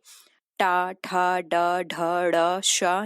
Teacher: हमारी जो जीभ है वो उल्टी हुई नोक पर निचला भाग मूर्धा से स्पर्श करता है, तब ऐसी स्थिति में मूर्धन्य व्यंजन हमारे निकलते हैं